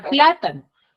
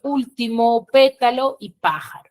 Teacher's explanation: son aquellas que van a tener la mayor fuerza de voz en la antepenúltima sílaba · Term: esdrújulas